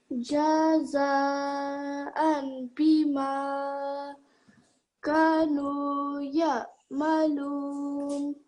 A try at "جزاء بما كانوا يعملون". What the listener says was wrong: This ka and this nu, so we have alif madda and we have waw madda. Just try to make them equal lengths, so they're both 2 seconds. Jaza'an bima kanu ya'malun. So ka and nu, both the same lengths.